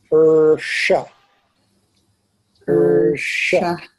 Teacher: the back of the tongue bunched with the tip hanging down